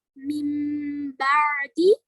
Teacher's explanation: We are pronouncing Ba firmly by pressing both our lips. and there is always a ba after the noon sakina. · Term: Iqlab